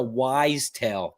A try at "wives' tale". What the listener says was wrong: You're saying wise tale. I've been always told it's a wives' tale. WIVES, wife plural.